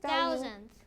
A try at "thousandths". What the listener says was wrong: not thousand but thousandths right with the ths